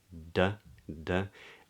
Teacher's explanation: So the D is like the T is made with the tip of the tongue on the alveolar ridge, yeah, pointing up